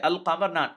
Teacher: we pronounce the lamb clearly separately from the palate and we don't say off as it has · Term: moon